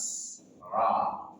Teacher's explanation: Dia punya sifat takrir, getaran. Ra, tapi getarannya hanya satu kali saja, jangan berlebihan.